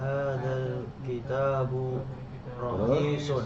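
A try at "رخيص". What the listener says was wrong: Hadza kitabu rakhisun wa dzaka ghalin. Buku ini murah, ya bukan rohis ya. Rohis pakai kho. Hadza kitabu rakhisun wa dzaka ghalin.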